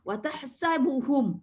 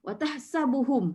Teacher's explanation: Pada mim sukun tak ada sifat hamas ya. Mim sukun bacaannya izhar. Izhar maksudnya zahir. Zahir maksudnya jelas. Jelas, pendek, tidak berdengung. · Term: izharus syafawi